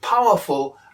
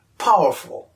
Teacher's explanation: we could read powerful as pow'rful, missing out the weak syllable in the middle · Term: elision